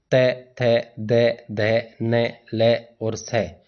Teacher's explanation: एक ही उच्चारण स्थान वाले दंत्य वर्ग के जो वर्ण हैं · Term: दंत्य वर्ण